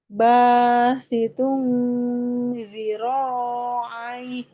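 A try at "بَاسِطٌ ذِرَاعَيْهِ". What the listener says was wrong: Dia nggak terlalu panjang. Kalau matobi ini cukup dua ya, jangan basitun zira'i itu tiga. Harusnya dia dua aja cukup. Basitun zira'i.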